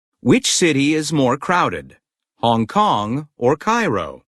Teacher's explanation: intonation of in questions of choice drops then Rises and then drops again